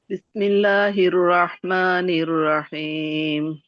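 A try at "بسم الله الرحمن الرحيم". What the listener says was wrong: আপুর হা উচ্চারণ হচ্ছে না। বিসমিল্লাহির রহমানির রহিম।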